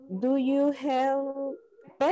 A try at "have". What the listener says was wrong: Tenemos problemas con esa palabra. No es have, es con A. Have.